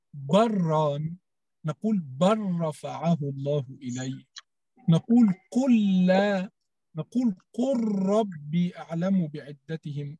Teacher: عندنا أدغمنا في العربية لام هل وبل مع الراء واللام